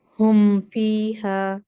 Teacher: Good. होम, होम में थोड़ी तो आप फील करते हैं, यानी साउंड नाक में जाती है